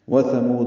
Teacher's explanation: واو جلدی پڑھیں گے، تھا نرمی سے پڑھیں گے، میم کو لمبا کریں گے اور دال ساکن پہ قلقلہ ہوگا